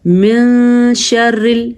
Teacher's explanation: اچھا، من شر نون ساکن کے بعد حروف اخفا میں سے شین آیا ہوا ہے، اس لیے یہاں پہ ہم نون کو کسی حد تک چھپا کے پڑھیں گے۔ میں تھوڑا رکیں گے بھی، تھوڑی سی غننے کی کیفیت بھی ہو جاتی ہے، لیکن اصل یہ ہے کہ ہم نے نون کو چھپانا ہے۔